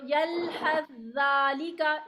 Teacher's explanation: इसमें सा नहीं पढ़ेंगे दाल ही पढ़ेंगे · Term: सा का दाल में